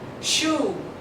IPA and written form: ʃuː (shoe)